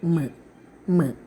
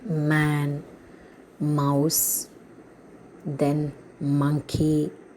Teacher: These three sounds we are pronouncing with the help of our nose. So it's known as nasal sounds.